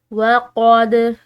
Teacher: دال جو ہے یہ حروف قلقلہ میں سے آ رہا ہے، تو اس کو ہم نے ہلاتے ہوئے ادا کرنا ہے